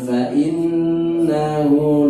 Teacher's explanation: nunnya ditasdid, dengung, hunya dua ketukan